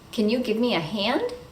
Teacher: usually the modal verb can is not pronounced clearly with an /æ/ vowel it's usually pronounced like /uh/ because it's reduced